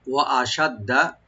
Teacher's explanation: দাল ডাবল করে পড়ব, টান হবে না, এই শব্দে কোনো টান নাই।